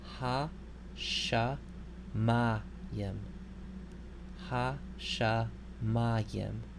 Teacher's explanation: you'll notice that the stress is on the next to the last syllable.